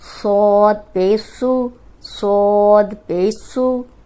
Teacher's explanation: صاد موٹا بھی ہے لیکن سیٹی والا ہے